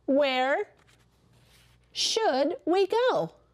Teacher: Did you hear how my voice went up at the end? And where, when it starts a sentence, is a question word.